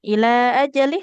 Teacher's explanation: Ila ajalih lam kasroh tidak bertemu dengan huruf ya, maka di sini tidak boleh Ajali dipanjangkan.